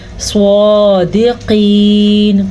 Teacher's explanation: اور سواد کو ہم پر پڑھیں گے. سواد ان 7 حروف میں شامل ہے جو ہمیشہ پر پڑھے جاتے ہیں، ہمیشہ ہی موٹے پڑھے جاتے ہیں